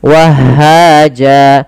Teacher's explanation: ketika di akhir bacaan dan waqaf, apabila ada fathatain bertemu alif di akhir bacaan, maka dia diiwatkan, diganti menjadi panjang sebagaimana mad tabi'i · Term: mad iwad